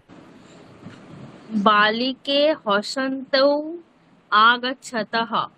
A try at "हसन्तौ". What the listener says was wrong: না, আপনি আপনি তো না বলে তিয়ৌ বলুন, তিয়ৌ তো না, আপনাকে যেটা বলতে বলা হচ্ছে সেটা বলুন, শুধু তি ঔ বলুন